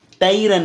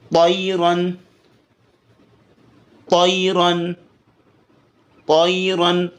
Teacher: تو کو موٹا کر کے طیرن. تیرن نہیں پڑھنا، تیرن باریک ہوگا تو غلط ہے. طیرن موٹا.